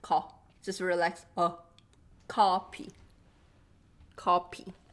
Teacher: Okay, rounded. And coffee is not rounded.